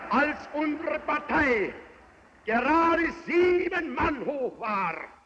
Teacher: La voix d'Hitler, elle est rauque, elle est rageuse, elle est puissante.